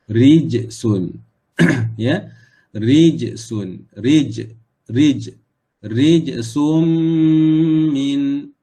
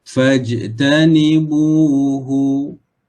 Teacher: jim tu hukumnya adalah qalqalah, maka kita kena lantunkan, pantulkan